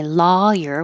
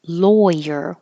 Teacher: I want my lawyer with an ah or lawyer with an oi.